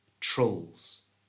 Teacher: we're going to change the I for the schwa sound. That's that little sound that's so common in English. So it becomes trulls.